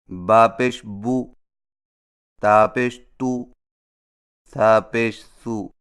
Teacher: سیدھی پیش ہونٹوں کو گول کر کے بغیر کھینچے اور جھٹکا دیے پڑھا جاتا ہے